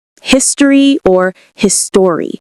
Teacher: Notice that we either don't pronounce the O in history, or we pronounce it as a schwa.